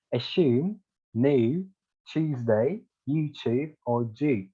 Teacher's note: British didn't actually drop that yod sound, so they would read it as like this, and this.